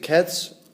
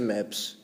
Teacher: entag formen udtalen af dette s afhænger af den foregående lyd efter en ustemt lyd udtales s også ustemt